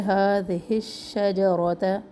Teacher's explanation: single حرکات ہیں، تمام زبر ہیں اور اس میں را کو موٹا پڑے، لمبا نہ کرے کسی بھی حرکت کو